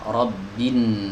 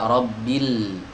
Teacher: lamnya tidak dibaca, digugurkan dalam pelafalan ya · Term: idgham syamsi